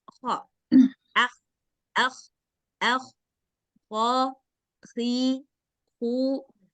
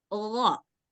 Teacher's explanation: Huruf kha dia ada suara dahaknya sedikit. Kha, akh, akh, akh, kha, khi, hu. Ada suara dahaknya sedikit. Sedangkan huruf gha yang ini nggak ada suara dahaknya. Dia harus bersih.